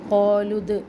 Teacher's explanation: لو اب یہاں پہ لو جو ہے یہ واو مدہ نہیں ہے، ٹھیک ہے، کیونکہ عربی کا قانون ہے کہ حرکت کے بعد جب ساکن آ جائے تو اس کے درمیان جتنے بھی حروف ہوتے ہیں وہ سارے سائلنٹ ہو جاتے ہیں، تو ہم لام کی پیش کو دال ساکن سے ملائیں گے. قالود اور دال پر قلقلہ بھی کریں گے